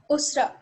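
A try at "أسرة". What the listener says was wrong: Usra, very good.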